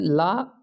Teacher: जिस ध्वनि के उच्चारण में जीवा श्वास वायु के मार्ग में खड़ी हो जाए और वायु उसके अगल बगल से निकल जाती है उसे पार्श्विक कहते हैं।